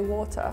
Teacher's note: England they pronounce the T